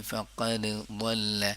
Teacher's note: دال اور ضاد جو ہے اس میں ادغام نہیں ہوتا ہے · ضاد کا مخرج کیا ہے سائیڈ، زبان کا سائیڈ والا حصہ